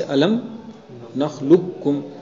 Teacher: دیکھو قاف اور کاف یہ مثلین بھی نہیں ہے، ایک حرف دو بار تو آیا نہیں ہے، دونوں کا مخرج بھی ایک نہیں ہے، ایک کا مخرج اعلی اقصائے زبان، دوسرے کا مخرج اسفل اقصائے زبان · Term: متقاربین